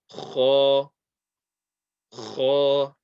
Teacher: This is a heavy letter, and it's from the top of the throat.